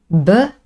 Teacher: very clear vibration here from the vocal cords. This is a voiced sound.